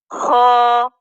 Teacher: ख अदना हल्क से ख अदा हो रहा है